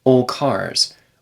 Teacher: if I say this quickly it might be old cars without any D sound at all but if I speak it a little bit more carefully there's